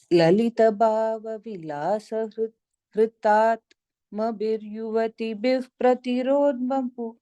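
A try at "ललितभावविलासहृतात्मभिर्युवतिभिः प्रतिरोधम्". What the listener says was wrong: I think the Yuvati Bif, you're taking it as a middle. You are kind of coming down. But it's the Hritatma Bhir is the middle of that line, right? So, Lalita Bhava Vilasa Hritatma Bhir, right?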